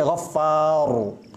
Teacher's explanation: Pangkal lidah diangkat, bibir membantu, far.